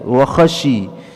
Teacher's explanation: Kemudian wa khasyiyar rahmana bil ghaib, wa khasyiya, wa khasyi, ya, wa huruf waw, kemudian huruf kha di tenggorokan atas kita